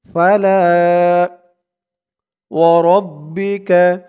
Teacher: লা এক আলিফ টান, জবরের পরে খালি আলিফ